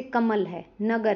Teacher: इन शब्दों में म और ग पर ज्यादा जोर दिया जाता है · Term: बलाघात